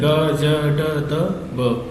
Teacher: हमारे गले में क्या होती है, झनकार उत्पन्न होती है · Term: सघोष